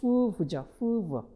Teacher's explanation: 자, 그 다음에 레이비오 덴탈이니까 레이비오니까 입술이고 덴탈이니까 이죠. 그래서 입술과 이가 서로 만나서 만들어지는 소리